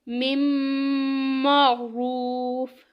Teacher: من میں دیکھیں نون ساکن ہے اور اس کے بعد یرملون میں سے میم آ گیا، تو اس کو پڑھیں گے مم معروف. مطلب کہ نون ساکن کے بعد یرملون میں سے میم آیا ہے، اس لیے یہاں پہ ادغام ہوگا.